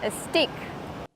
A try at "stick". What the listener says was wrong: The word is not pronounced steak. It's pronounced stick. This is a stick. In both words, we have to use the short I sound like this is. I. Not E like green beans. Don't say steak. Say stick or twig.